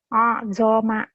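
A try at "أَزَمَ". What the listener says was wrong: Jangan azoma, gabungin. Azoma. Ini kan udah gabung.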